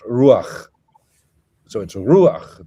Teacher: The accent is on the U, and it's just a short A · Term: patach furtivum